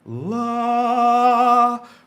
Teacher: your first tone is an even pitch